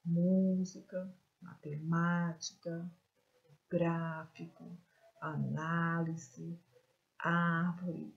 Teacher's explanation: Por quê? Porque a sílaba mais forte está onde? Na antepenúltima sílaba. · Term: proparoxítonas